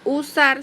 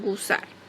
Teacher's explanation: Delante de una vocal posterior inicial de una palabra suelen insertar una G, de manera que usar se convierte en gusar.